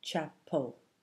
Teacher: the vowel in the first syllable sounds much clearer than the vowel in the second syllable the letter a in cha is making its most common sound · we're making an uh sound there very short very fast this sound is called the schah everyone's version of the schah · E is making a quiet, neutral sound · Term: schwa